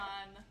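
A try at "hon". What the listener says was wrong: No. They don't say hun, they say horn. It sounds like horn. Horn. Horn. Horn.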